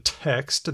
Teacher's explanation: There's aspirated T, like as in text.